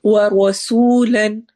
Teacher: واو میں ہونٹ گول، را موٹا پڑھا جائے گا. سین سیٹی والی آواز اور واو میں واو مدہ ہو رہی ہے.